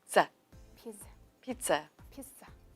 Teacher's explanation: it is a z, but we don't drag it out too much. It's nearly like a broken z.